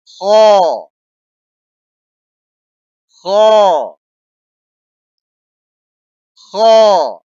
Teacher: اس حرف کو موٹے الفاظ میں پڑھا جاتا ہے